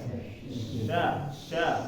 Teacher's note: k kanan jadi Sya ini di mana tengah tengah ya berat tengah tengah naik ke atas ya naik ke langit-langit tengahnya